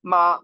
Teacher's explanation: it's all a high steady tone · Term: first tone